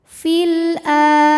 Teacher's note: jika wasal fil pendek fil ada hukum alif lam qamariah karena alif lam menghadapi huruf qamariah yaitu Hamzah maka lam sukun dibunyikan dengan jelas